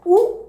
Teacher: ഉ എന്ന് പറയുമ്പോൾ തന്നെ നമുക്ക് ചുണ്ട് മാത്രം, ചുണ്ട് ഒന്നിച്ച് വരികയില്ലേ? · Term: ഓഷ്ടം